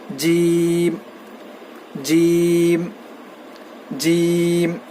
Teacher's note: جیم کا مخرج ہے زبان کے بیچ کے حصے سے جیم ادا ہوتا ہے